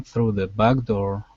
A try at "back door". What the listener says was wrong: Let's go to the word back. So here, it sounded like you said bag door, using a G, bag. Instead of g, it's k, back door.